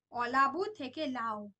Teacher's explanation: অলাবু থেকে লাউ, দেখো অটা লোপ পেয়ে গেছে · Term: আদি স্বরলোপ